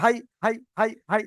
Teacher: আর যদি জাবার আমি দিই, তাহলে এক্ষুনি যে 9 নম্বরে পড়াটা এটাই আসবে। ইয়াই লিন হবে, মানে নরম আওয়াজে তাড়াতাড়ি পড়তে হবে।